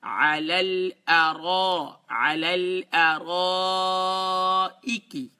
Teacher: لام کو لام سے ملائیں گے تو لام دونوں لائٹ ہیں، اور اسی طریقے سے را کو فل ماؤتھ کریں گے.